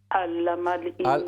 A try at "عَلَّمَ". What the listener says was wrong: نہ پڑھیں، عین کو درست کریں، علم